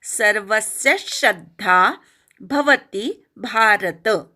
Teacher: सर्व मधल्या स वर आघात व वर पण आघात सी वर पण आघात श्र वर पण आघात